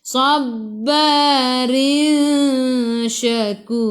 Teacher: jadi ikhfa hakiki dengan 2 harakat. Bawa ke sisi huruf shin.